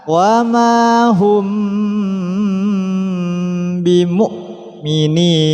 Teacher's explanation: Apabila ada mim mati bertemu dengan mim dan ba maka harus didengungkan ditahan wa Hum bimukminin di sini Hamzah bukan Ain Jadi bimukminin bukan